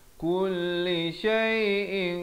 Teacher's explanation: ikhfa hakiki dibacakan dengan samar dan tebal dua harakat